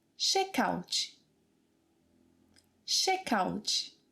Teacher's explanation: we kind of add this vowel sound E at the end of the word